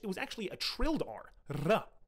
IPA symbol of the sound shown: r